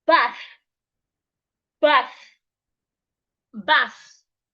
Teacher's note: The TH in that word, you need to put your tongue outside.